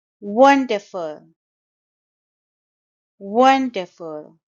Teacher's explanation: It's a three-syllable word and the stress is on the first syllable. Wonderful. And note that the last sound is sure sound.